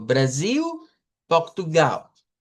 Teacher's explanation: Vea que se escribe una L al final, usted la pronuncia como U. · Ya habrán notado que cuando yo digo lo que en español diríamos Brasil y Portugal, al final en vez de hacer una I, hago una U. Y digo Brasil, Portugal.